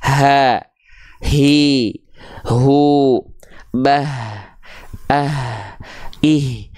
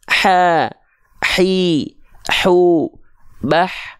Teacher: Nah, banyak orang melafalkan H kecil, dia bukan tepat dari bagian tengah tenggorokan, tapi dia dilafalkan terlalu ke bawah. Nah, kalau H kecil dilafalkan terlalu ke bawah, ini jadinya huruf H besar.